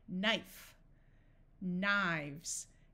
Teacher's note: Notice that when we go from one knife to multiple, the F becomes a V.